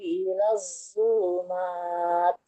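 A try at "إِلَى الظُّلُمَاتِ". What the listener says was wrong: Ilawu, huruf nya ilazulumat. Nah, enggak ilazu. Jadi lidahnya jangan ditempelkan ke ujung gigi seri bawah, tapi ujung lidahnya menempel ke ujung gigi seri atas. Ilawu, wo, wo, ilazulumat.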